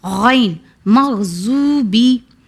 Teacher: غین حرف حلقی ہے، یعنی حرف حلقی ہے، اسے حلق سے ادا ہوگا، وہ بھی ہمارے حلق کے فرسٹ پارٹ سے